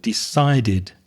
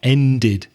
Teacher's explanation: Notice the pronunciation on the past of decide there because it finishes with a d. So, we add the extra syllable decided like ended for example.